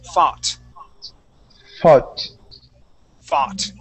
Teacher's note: Okay, now the O-U-G-H, instead of sounding like faut, we say that O-U-G-H, replace that with an aw sound. Okay, so instead of saying faut, we say fa, fought.